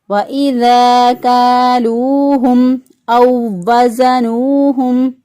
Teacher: میم ساکن کے بعد حمزہ آگے اظہار شفوی کریں گے، میم کو ظاہر کر کے پڑھیں گے